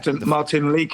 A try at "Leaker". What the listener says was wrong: Leaker. It's how it's said. It's not leaky. It's Leaker. Leaker. Leaker. It's got almost silent D.